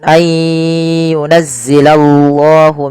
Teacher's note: tebalkan lafal Allah karena di situ lamnya lam tafhim